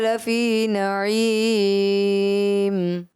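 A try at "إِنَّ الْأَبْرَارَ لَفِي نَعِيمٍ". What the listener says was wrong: مجھے بھی تھوڑا سا محسوس ہوا ان الابرار، را صحیح پر نہیں، جو ایک پر ہو رہا تھا دوسرا کمزور ہو رہا تھا، اس وجہ 10 میں سے 9 نمبر.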